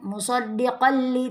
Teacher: tidak boleh dengung, ini idgham bila gunna.